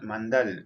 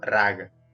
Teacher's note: la corta final de las palabras generalmente se elimina